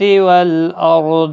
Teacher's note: والارض را ساکن سے پہلے زبر ہے، پور پڑا جائے گا